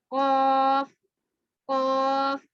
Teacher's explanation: زبان کی جڑ کا تالو کے نرم حصے سے لگنا قاف کا مخرج نکلتا ہے